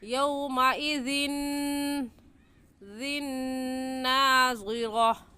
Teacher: یومئذ کی تنوین پر بھی غنہ کریں گے کیونکہ تنوین کے بعد حروف یرملون میں سے نون آ گیا ہے.